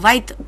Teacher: કાઠિયાવાડી બોલીમાં ય ધ્વનિ ઉમેરાય છે તો એ શબ્દને અંતે પણ બોલાય છે અને છેલ્લા વ્યંજન પૂર્વે પણ બોલાય છે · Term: ય શ્રુતિ